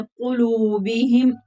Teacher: काफ भी हरूफ मुस्तालिया है, मोटा करके पढ़ेंगे। वाव मद्दा है।